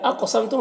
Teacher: قاف حروف مستعلیہ میں سے ہے، اور قاف حروف قلقلہ میں سے بھی ہے، تو پر بھی پڑھنا ہے اور قلقلہ بھی کرنا ہے۔